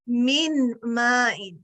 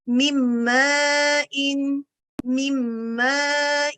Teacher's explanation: نون ساکن کو میم میں ایسے مرج کریں گے کہ میم نون کی آواز پر غالب آ جائے گا. مم ان, غلط طریقہ پڑھنے کا کیا ہوگا, من ماء, نون کی آواز واضح ہو رہی ہے یہاں پر. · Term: ادغام